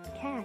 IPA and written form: kæt (Cat)